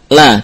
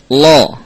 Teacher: La kita sebut kita lafalkan dengan tipis, nam, tidak dengan tebal. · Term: sifat istifal